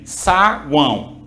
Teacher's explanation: O U é uma semivogal, o A é uma vogal e o O é uma semivogal, formando, portanto, um tritongo.